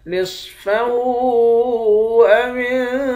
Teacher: واو کو نون کے ساتھ ملا کر نون پر اخفا کریں گے۔ قاف اور صاد ان دونوں حرف کو موٹا پڑھیں گے · نصفہ او انقص، صاد کو موٹا پڑھیں گے، ہاں کے اوپر الٹا پیش ہے، الٹا پیش کے اوپر مد ہے، اس مد کو 3 الف کے مقدار کھینچ کر پڑھیں گے۔ واو کو نون کے ساتھ ملا کر نون پر اخفا کریں گے۔